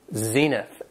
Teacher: Has two syllables and the stress is on the first syllable